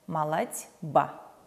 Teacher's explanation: Глухой «т» находится перед звонким «б», поэтому звонкий «б» озвончает глухой «т» в «д». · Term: озвончения